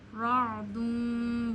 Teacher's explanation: रॉ को मोटा पढ़ना है क्योंकि रॉ पे ज़बर या पेश हो रॉ मोटा पढ़ा जाता है, और आइन आप गले के दरमियान से अदा करते हैं।